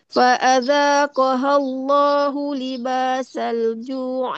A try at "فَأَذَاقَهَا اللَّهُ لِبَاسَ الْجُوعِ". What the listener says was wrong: Tidak ada dengung kat situ. Libasal ju'i wal. Oh, pendek saja. فأذاقها الله libas.